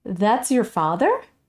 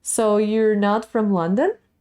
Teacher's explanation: end i decide it's going to be a question that's why you have this suddenly rising intonation at the end